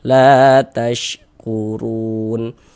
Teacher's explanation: Alif, sebelum alif ada ini, ada harakat fathah nih, ada tanda baca fathah baris 1 di atas huruf. Hasilnya la dibaca panjang, mad tabi'i panjang 2 harokat.